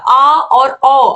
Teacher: विवृत यानी कि जिन को बोलने पर जो मुख है वह पूरी तरीके से खुलता है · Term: विवृत स्वर